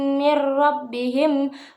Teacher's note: pada kata mir rabbihim terdapat hukum bacaan idgham bila gunah yang dibaca tanpa mendengung.